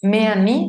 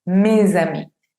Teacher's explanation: Por eso no decimos me a mí, sino mes a mí. Esa S que antes era muda, ahora toma sonido y la escuchamos. Mes a mí. Z, z. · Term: liaison